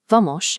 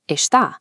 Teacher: In Rio, when an S appears before a consonant or at the end of a word, it transforms into a heavy, distinct sha. A basic word like vamos becomes vamosh.